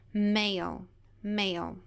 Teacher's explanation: Nesse caso, a gente não ouve o som do A, do I, a gente ouve o som longo da letra A, que é A. Male, male, ok?